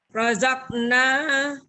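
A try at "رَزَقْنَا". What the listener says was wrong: Oh, kol-kolannya kurang. Rozaqna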